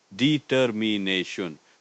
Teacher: 5 syllables with the main stress on the 4th syllable